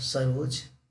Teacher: विसर्ग का ओ में परिवर्तन